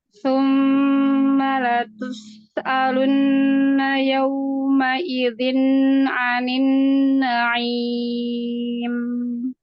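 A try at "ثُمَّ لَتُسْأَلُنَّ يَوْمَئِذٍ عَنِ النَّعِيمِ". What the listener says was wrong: Pas baca su-nya itu agak kegedean monyong apa jadi belum sampai kecil gitu. Jadi lebih ke o. summa.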